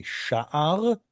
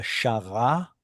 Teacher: So shin ein resh becomes shin resh ein. The resh and the ein swap from one language to another. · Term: metathesis